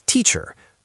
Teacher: In American English, we add a little R color to it. So, it's teacher, but the vowel quality, it's essentially the same neutral lazy sound.